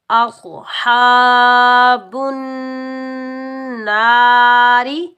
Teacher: ہا، با کے اوپر پیش، آخو ہا، با کے اوپر پیش، با کو ہم نون مشدد کے ساتھ ملائیں گے، نون کے اوپر شد ہے اور نون مشدد حروف یرملون میں سے آ رہا ہے تو یہاں ہم ایک الف کی مقدار غنہ کریں گے۔ نون مشدد کے اوپر زبر، آگے الف خالی ہے تو یہ الف مدہ، اس کو ہم ایک الف کی مقدار کھینچ کر بھی ادا کریں گے۔